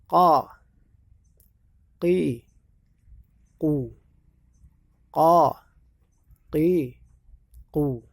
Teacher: makhraj asli daripada qaf adalah pangkal lidah dekat anak lidah digabung dengan langit-langit di atasnya